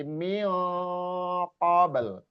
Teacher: Ini juga ikhfa mio qabl kalau berhenti. Mio qabl, jangan dibaca min qabl, tapi mio qabl diikhfakan